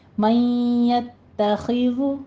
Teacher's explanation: یتخے نہیں کہنا، خے مجہول ہے، خی خوازر خی، من یتخذ ذال کے اوپر نرمی کریں گے، سیٹی کی آواز نہیں آنی چاہیے